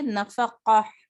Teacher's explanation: نون زبر نا، فا زبر فا، نفا، قاف زبر قا، نفقا، تا ہا 2 زیر تن. تو جب اس کو وقف کریں گے تو اس کو ہم تا کو نہیں پڑھیں گے، نفقہ پڑھیں گے